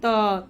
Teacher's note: हमारी जीभ कहां जा रही है? दांत के जस्ट पीछे तो ये दंत से उच्चारण होता है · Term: त वर्ग